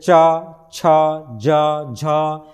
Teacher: जिह्वा का अग्रभाग कठोर तालु को छुएगा, तो जैसे च का उच्चारण करने से जिह्वा का अग्रभाग क्या है, तालु को स्पर्श कर रहा है। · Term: तालव्य व्यंजन